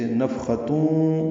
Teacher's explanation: تنوین کے بعد واو آنے کی وجہ سے نفختون، جیسے پچھلی آیت میں اذنون پڑھا، ادغام ناقص ہے